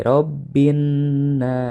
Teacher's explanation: nah binnas dalam binnas itu ada dua hukum ya utama adalah hukum alif lam syamsiah yang dibacanya dimasukkan langsung ke huruf yang bertasydid atau huruf Syamsiah tanpa membaca huruf alif lam nya jadi dibaca di robbinnas ini ada alif lam jangan sampai terbaca